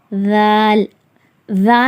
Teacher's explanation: நாக்கு வாயை விட்டு கொஞ்சம் நுனி நாக்கு மட்டும் வெளியே தெரியற மாதிரி மெலிதாக ஓதப்பட வேண்டும்